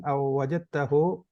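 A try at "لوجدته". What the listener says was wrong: bukan au. La wajad bukan lau. La. La wajadtahu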